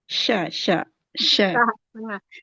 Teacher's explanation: makhraj huruf syin tengah lidah dekatkan ke langit-langit. Jangan di depan.